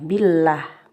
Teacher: namanya lam jalalah tarqiq. Jadi tipis bacanya, billah, bukan billah, tapi billah.